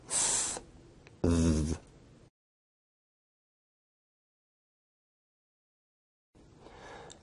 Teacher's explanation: Interdental sounds are produced with the tongue in between the upper and lower teeth